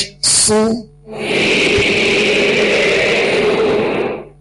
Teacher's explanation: دونوں ہونٹوں کو کامل گول کرنے سے پیش ادا ہوتا ہے